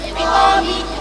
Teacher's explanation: Mad arid lissukan, mad thabi'i meets a living letter read as waqf, length is 3 alif or six harakat